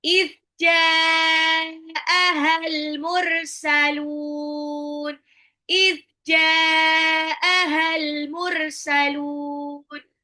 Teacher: Jnya dipanjangin enam harakat · If ya, jadi bukan is, nggak dipantul. If jimnya itu tengah lidah bertemu langit-langit atas.